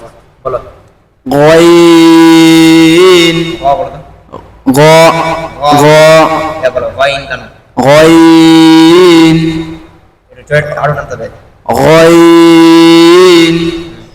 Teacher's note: এবার গইন, গইন শব্দটা উচ্চারণ করার সময় তিন আলিফ টান হবে, আর এই গয়নের মাখরাজ হচ্ছে কণ্ঠনালীর উপরিভাগ আর জিভের গোড়ার এই মধ্যভাগ, জিভের গোড়া কণ্ঠনালীর উপরে ভাগের মধ্য স্থান থেকে উচ্চারণ হবে, বুঝতে পারলা? জিভের গোড়া আর আমাদের কণ্ঠনালীর উপরের অংশ এই দুটার মাঝখানে থেকে এই গয়ন উচ্চারণ হবে, গ গ এই শব্দটা বেরোবে, গয়ন তিন আলিফ টান, গয়ন গয়ন, ফার্স্টে গ গ এভাবে পড়বা, তারপরে গয়ন এভাবে প্র্যাকটিস করবা।